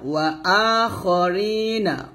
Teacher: ওয়া আ খা বলবেন না, খ মোটা করে, ওয়া আতে একটু টান দিবেন।